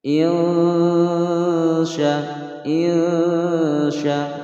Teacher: Huruf sin ini adalah salah satu huruf ikhfa, maka pembacanya adalah disamarkan disertai dengan adanya dengungan